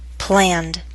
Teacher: pronounce the Ed ending as D after voiced consonants and vowels